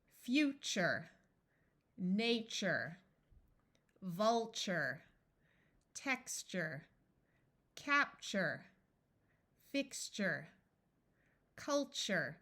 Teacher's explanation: even though this is spelled t e it sounds like chur because the sound T is hard to say